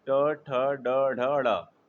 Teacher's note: ट वर्ग क्या है? ट, थ, ड, ढ, ड। इसका उच्चारण स्थान क्या है? मूर्धा।